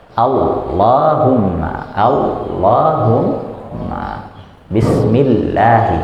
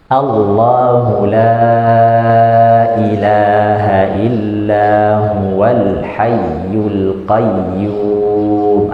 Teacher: Harusnya dia tetap naik lidahnya ya, ujung sisi lidahnya tetap nempel dengan listatil ulya ya, gusi atas ya, hanya saja agak sedikit ditebalkan.